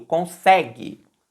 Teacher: A sílaba tônica é o sé. A parte mais forte da palavra, quando a gente vai falar, é a sílaba do meio.